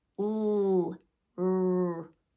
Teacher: our liquids are also voiced. L, r. All of those, you should be able to feel your vocal cords vibrating.